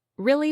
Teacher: when someone says, really, with a rising tone, it often means surprise.